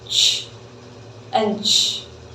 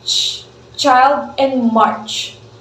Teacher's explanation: so we have t and straight away followed by sh